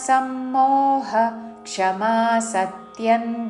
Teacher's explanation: విసర్గ ఉచ్చారణ హ పక్కన క్ష తో పదం మొదలైనది కాబట్టి అపవాద నియమానుసారము విసర్గ ఉచ్చారణ హ లాగా చేస్తూ తర్వాత క్షమ అని పలకాలి